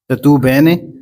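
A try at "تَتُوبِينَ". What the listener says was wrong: زیر آئے گی. بینا،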